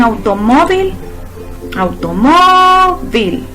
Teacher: Si nos fijamos, la sílaba tónica está en mo. Ahí entonces recae su acento.